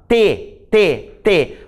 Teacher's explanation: A minha língua tocou na arcada dentária superior. T. Então, por isso que a gente diz que o T é um fonema linguodental, certo?